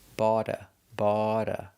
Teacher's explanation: If you have the word bought plus a vowel, then the t changes to a d sound, a fast d.